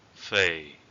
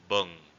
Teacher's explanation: For the second tone, it's called low falling tone. Again, the tip to pronounce this tone is that it would sound kind of depressing.